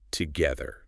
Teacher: it is a soft, vibrating th. Your tongue must touch the bottom of your top teeth.